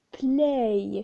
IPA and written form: pleɪ (play)